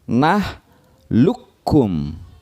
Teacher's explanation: bacaannya nah lukum cara membacanya atau dibacanya nah look Um ya jadi kapnya bertasydid karena lebur masuk ke huruf Kaf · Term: idgham mutaqaribain